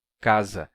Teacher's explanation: o fato desse S estar entre essas duas vogais fez com que S fosse sonorizado e ele passasse a ser pronunciado com vibração das cordas vocais · o s entre vogais se pronuncia como Z casa porque ele ganha a sonoridade das vogais que estão ao